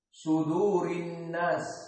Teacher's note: mulailah shad su dalam keadaan mufakhamah, dan dal muraqqaqah, wal waw muraqqaqah, wal ra muraqqaqah atau mufakhamah.